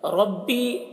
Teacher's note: ربی را کے اوپر زبر ہے، را کو پر پڑھیں گے۔ بی یا مدہ ہے، ایک الف کے برابر کھینچ کر پڑھیں گے۔